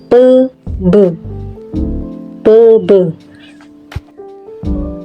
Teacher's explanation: atas sehingga udara yang dihembuskan dari paru-paru terhambat untuk beberapa saat bibir bawah yang menekan rapat pada bibir atas itu kemudian secara tiba-tiba dilepaskan terjadilah letupan udara keluar dari rongga mulut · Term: konsonan hambatlup pilabial, konsonan hambat letup bilabial